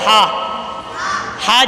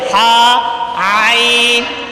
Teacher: عین عین، عین حلق کے درمیان والے حصے سے ادا ہوتا ہے، جس سے ہا ادا ہوتا ہے، ہا، ہا جس مخرج سے ادا ہوتا ہے اسی سے عین بھی ادا ہوتا ہے، یعنی کہ عین اور ہا یہ دونوں حلق کے درمیان والے حصے سے ادا ہوتے ہیں۔